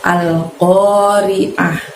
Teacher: Pengucapannya pendek semua kecuali pada saat kita mengucapkan oh. Ingat, oh di sana qaf fathah, jadi ucapkan atau bunyikan suara ko-nya dari pangkal lidah kita hingga menyentuh langit-langit.